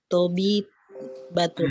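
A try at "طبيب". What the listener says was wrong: Nah, ini ba ya. Coba lihat ini ba. nggak ada taknya. Tobibun. Tobibun.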